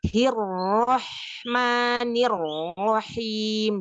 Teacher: Ya, itu makrotnya jangan berpindah. Ketika dia ha sukun ketemu ha yang berharokat kasroh itu nggak berpindah. Jadi hirrahmanirrahim.